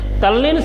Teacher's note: હવે અહીંયા આગળ ત વર્ગ છે, ત વર્ગના જે કંઈ દંત્ય જે વ્યંજનો છે ત, થ, દ, ધ, ન, ત, થ, દ, ધ, ન જે કે દંત્ય વ્યંજનો જે છે એ દંત્ય વ્યંજનો સાથે જો લ આવે, દંત્ય વ્યંજનો સાથે લ આવે તો એ દંત્ય જે વ્યંજનો છે એનો લ થઈ જાય છે